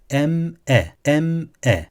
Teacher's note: mimde bekleme yapmayacağız yani Mime dokunup geçeceğiz Mem e m e yani şu değil em e şeklinde durmayacağız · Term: mimin izharın